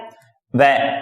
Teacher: वकार से दंतोष्ट सूत्र है हमारा क्या है, वकार से दंतोष्ट। वह का उच्चारण स्थल है क्या है, दांत और ओष्ठ दोनों होते हैं। वह, जब वह का उच्चारण करोगे तो होठ तो क्या आपस में मिलेंगे और जीभ क्या करेगी, दांतों को हल्का सा स्पर्श करेगी, दांतों को हल्का सा स्पर्श करेगी। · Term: दंतोष्ठ